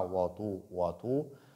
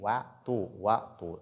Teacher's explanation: il ne faut pas lire waw avec emphase. Donc, pas avec tafrim.